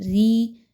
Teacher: را کے نیچے چونکہ زیر ہے اس لیے اس را کو باریک پڑھیں گے، اور یا مدہ ہے تو 2 حرکات کے برابر کھینچا جائے گا۔